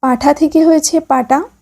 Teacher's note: ক্ষীণায়ন বা অল্প প্রাণী ভবন, শব্দ মধ্যস্থিত মহাপ্রাণ ধ্বনি অল্পপ্রাণ ধ্বনিতে পরিণত হলে তাকে ক্ষীণায়ন বলে